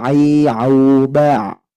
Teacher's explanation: huruf ainnya harus tunai dari wastul halqi atau tenggorokan bagian tengah, tidak boleh dari hidung.